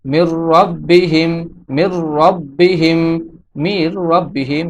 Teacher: মিম নুনের সাথে না মিলে রর সাথে মিলিত হয়েছে এবং এখানে কোনো গুণনা হয় নাই